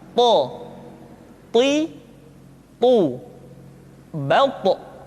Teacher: To diucapkan dengan menyentuhkan ujung lidah dengan gusi-gusi dua gigi seri bagian atas.